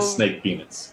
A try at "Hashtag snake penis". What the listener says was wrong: Hashtag snake penis. You gotta pronounce the hashtag.